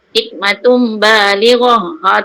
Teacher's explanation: Asalnya hikmatun ba. Hikmatun ba. Tapi kita tukarkan kepada sebutan mim. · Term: iklab